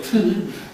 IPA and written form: tɨː (tŷ)